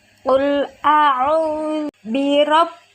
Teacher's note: ada ra fathah maka dibaca tafkhim atau tebal